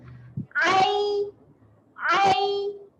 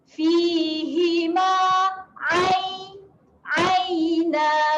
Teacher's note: Makhraj huruf ain adalah di tengah kerongkong. Jadi kita tekan sedikit di tengah kerongkong untuk bunyikan huruf ain.